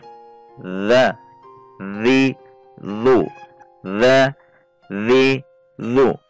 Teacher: Sifat huruf dzal yang perlu kita perhatikan adalah yang pertama, al-jahru. Ternyata saat mengucapkan huruf dzal itu tidak boleh ada nafas yang keluar dari mulut kita karena dia memiliki sifat al-jahru atau jahr.